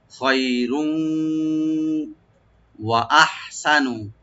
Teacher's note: আছে, তানবিনের সাথে ওয়া লাস্টে যে নেক্সট শব্দে যে ওয়া আছে, ওয়ার সাথে মিলেই আমরা ইদগাম উইথ গুন্না করবো